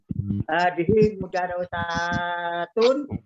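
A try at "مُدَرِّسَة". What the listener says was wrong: Mudarisatun. Kasro kalau di bawah tasdid itu walaupun posisinya di atas itu kasro. Bukan fathah.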